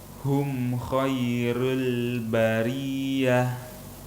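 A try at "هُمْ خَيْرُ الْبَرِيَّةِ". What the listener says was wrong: Roknya harus sempurna domanya, jangan roll tapi ru. Rul.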